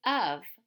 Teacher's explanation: a lot of times we hear of with a V. It has like a V sound.